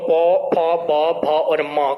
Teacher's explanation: इसके पश्चात हमारे पास आता है ओष्ठ्य, और पौ वर्ग के जो आपके वर्ण होते हैं इनको ओष्ठ्य कहा जाता है, क्योंकि इनका जब उच्चारण करते हैं तो हमारे दोनों ही ओष्ठ क्या करते हैं, तो इसमें ध्यान देना, दोनों ही ओष्ठ आपके जो है स्पर्श करते हैं आपस में एक दूसरे को, तो इसलिए इनको क्या कहेंगे हम, तो प फ ब भ और म का जब उच्चारण कर रहे होते तो इनमें ओष्ठ हमारे आपस में मिल जाते हैं।